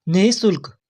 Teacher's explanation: इस नी के बाद विसर्ग लगा हुआ है जिसका अर्थ है कि नी के बाद मुंह से हल्की है जैसी हवा निकालनी है